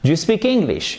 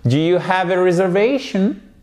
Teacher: Pour faire la question, pour la prononcer, on va avoir une intonation montante.